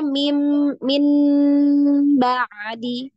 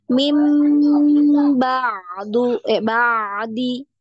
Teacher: Mim diubah ya. Nunnya berubah bunyi jadi mim.